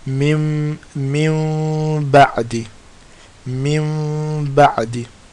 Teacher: you bring your lips close, they don't touch. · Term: Meem sakin